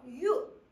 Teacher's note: 반모음 이와 그 다음에 우를 발음해서 유 이렇게 발음을 하는 거예요. 그래서 아주 빠르게 발음을 하다 보니까 얘는 하나의 음운처럼 들리기는 하지만 사실은 반모음과 단모음을 두 개의 모음을 발음하고 있는 거다.